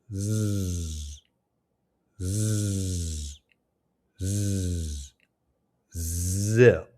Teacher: Your mouth should be slightly open with your teeth close together, and your jaw should be stable and relaxed with your tongue tip near the top of your mouth behind the teeth, just like it is for the S sound. The difference is that the Z sound is voiced. And that means the vocal cords vibrate, creating the buzzing quality. · It's a voice buzzing sound where the vocal cords vibrate. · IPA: /z/